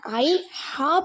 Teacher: தொண்டையின் நடுப்பகுதியில ஐன் ஹா பிறக்கிறது